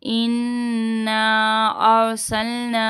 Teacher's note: اننا یہاں پہ نون مشدد کا گنہ کر کے اور 3 الف کی مقدار کھینچ دیں گے